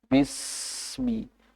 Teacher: Jadi ada durasinya. Durasinya mungkin hampir sepanjang 2 harokat. Hampir. Tapi nggak terlalu panjang.